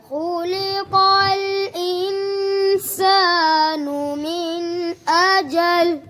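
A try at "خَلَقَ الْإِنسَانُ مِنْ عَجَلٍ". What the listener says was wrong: غنہ آپ نے توڑا کیا، دوبارہ پڑھو.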